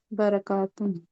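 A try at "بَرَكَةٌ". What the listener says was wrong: बरका, यहाँ पे जबर है।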